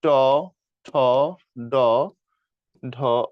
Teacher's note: মূর্ধন্য বর্ণ, কারণ এগুলো হচ্ছে সবগুলো মূর্ধাতে উচ্চারিত হয়